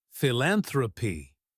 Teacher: Notice the stress on the second syllable.